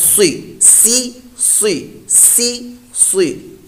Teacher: اب صاد کے نیچے دیکھیں حرکت ہے، تو پہلے حرکت کو لمبا نہیں، صاد زیر سی، آواز نکلی سی، اور صاد حروف مستعلیہ میں سے ہے، پر موٹا بھی اس کو پڑھنا ہے